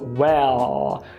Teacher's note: falar well, com o I relaxado, e com o L subidinho